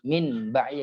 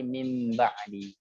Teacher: nun sukun dibalikin menjadi mim. Misalnya mim ba'di, min ba'di jadi mim ba'di. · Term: iqlab